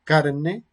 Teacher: se puede pronunciar en un estilo más enfático como una vibrante simple